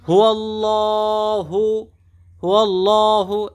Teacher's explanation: আল্লাহ শব্দে এক আলিফ টান আছে